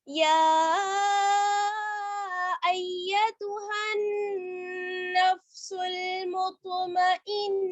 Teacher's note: अगर हम आयत पर ठहरेंगे तो ये गोलता जो होती है ये हा में बदल जाती है